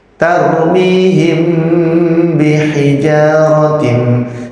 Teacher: mim sukun bertemu dengan huruf ba itu namanya Ikhfa Syafawi ya cara pengucapannya adalah mim tampak samar disertai dengan ghunah